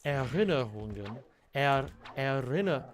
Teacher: I think I do the R's too hard. I think I do them more of like a Bavarian kind of guttural R.